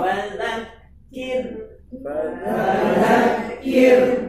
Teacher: Rohnya tarkik tafkhim. Tarkik karena didahului huruf Kasrah.